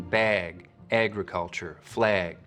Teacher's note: you'll also start to get raising and tensing in the trap vowel when it comes right before a G sound like in bag, agriculture, flag, similar to what you can hear over in Minnesota. · Up over the border in Vancouver, you'll hear that same lot rounding, but you'll also start to get raising and tensing in the trap vowel when it comes right before a g sound